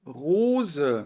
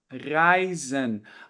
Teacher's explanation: quando a gente tem um s entre duas vogais a gente pronuncia com som de z